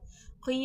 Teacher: इदग़ाम मअल गुन्ना होगा, यानी कि दो लफ्ज़ आपस में मिलेंगे गुन्ना के साथ। क़ी में या मद्दा हो रहा है, या साकिन से पहले ज़ेर है, खींच के पढ़ा जाएगा।